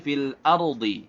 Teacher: fil ardi ra tafkhim karena dia sukun sebelumnya fathah, dad tebal juga karena dia memang dia isti'la.